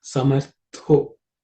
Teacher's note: This tha is the second letter in the tha varga, so it has to be aspirated.